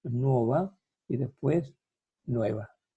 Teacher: Y romance español, esta O tónica abierta, hay que decir dos cosas, tónica abierta, diptonga en wo y después evoluciona a we